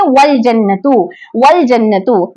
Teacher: वस्ल के माना है मिलाना, तो ये वाव को लाम से मिलाकर हमजा वहां से हट जाएगा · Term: हमजतुल वस्ल